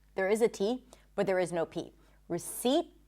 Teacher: Now, the P is also silent in the word receipt. The T is pronounced, by the way, it's held. This is why you're not fully hearing it